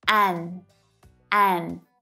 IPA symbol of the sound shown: 'æn